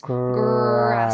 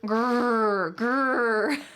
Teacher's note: This is the R sound, or in American English, we often call this the colored R because it's very strong.